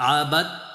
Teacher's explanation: মা, মিম আলিফ জবর মা, আইন জবর আ, বা তা জবর বাত, আবাত। এ দালটা মাঝখানে উচ্চারণ হবে না, সাকিনের পর তাসদীদ চলে আসলে সাকিনটার উচ্চারণ হয় না।